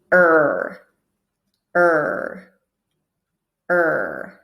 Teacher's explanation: the tip of our tongue goes up a little bit right it's pointing up for this r sound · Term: american r sound